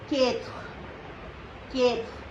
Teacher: E is silent, and the last R is giving Kha sound